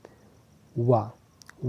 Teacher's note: वा जो है दंत और ओष्ठ इन दोनों को मिला के एक साथ निकाली जाती है। वा को आप देखिए, दंत और ओष्ठ इन दोनों को मिला के वा जो है ध्वनि निकाली जाती है।